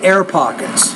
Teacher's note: you have to pronounce your p with more air